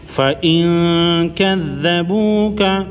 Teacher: نون پر جزم ہے، نون ساکن پر اخفاء حقیقی یعنی غنہ ہوگا۔ اس کے بعد حروف اخفاء میں سے کاف ہے۔